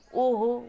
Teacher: अ होलाई ओ हो भन्नु, अ ध्वनि ओमा परिवर्तन भएको छ।